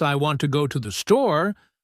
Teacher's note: For example, in the sentence, I want to go to the store, the words want, go, and store are stressed because they carry the main meaning